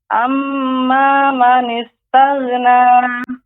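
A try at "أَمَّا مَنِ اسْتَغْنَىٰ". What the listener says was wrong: Ya, gha termasuk huruf isti'la, sehingga ketika dia sukun, ya, isti'lanya naiknya suara ke langit-langit tetap terasa pengucapannya. Amma man istaghna, taghna. Amma man istaghna, tidak boleh memantul, bukan taghna. Tapi taghna, taghna. Amma man istaghna, taghna. Amma man istaghna. Bedakan kalau saya baca amma man istaghna. Ini taghna, ini sudah habis, baru kita berikan huruf nunnya. Taghna.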